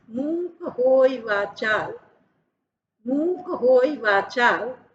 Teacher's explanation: तो मूक शब्द जो है दीर्घ है, का जो है ह्रस्व है, होई, होई हो दीर्घ है, वाचाल, वा पूरा है यानी दीर्घ है, चा भी दीर्घ है, और ल ह्रस्व है